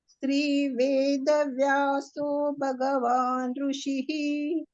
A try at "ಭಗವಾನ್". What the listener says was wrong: ಭಗವಾನ್ ಭ ಮಹಾಪ್ರಾಣ ಕೇಳ್ಬೇಕು. ಭಗವಾನ್